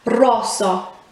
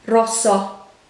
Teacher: remember to roll the r and the o at the end needs to have a short sound but with your mouth still open at the end so it's not rosso as if there was a h at